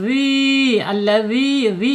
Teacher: Ini secara hukum mad tabi'i. Mad tabi'i ya panjangnya 2 harokat, 1 alif atau 2 ketukan. Kemudian secara makhraj, karena di sini ada mad tabi'i ya, karena di depannya ada huruf panjang ya, maka secara makhraj ri dikatakan al-jaub.